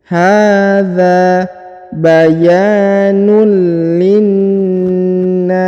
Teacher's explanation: huruf na ditahan dan ditekan ya, ada tanda tasdid, lalu dipanjangkan 2 harokat karena di depannya terdapat tanda alif ya.